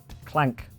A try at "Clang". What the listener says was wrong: Clang. Not clank. You said clank. It's a completely different letter.